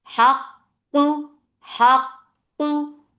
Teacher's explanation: Qaf is heavy and there is a sifa of shidda here. No flow of sound. The makhraj is cutting off the sound, so there is no flow.